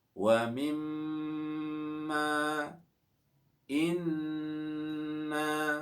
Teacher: disebut bacaan wajibul gunnah, wajib dibaca mendengung. Ya, seperti bacaan atau seperti contoh wa mimma inna.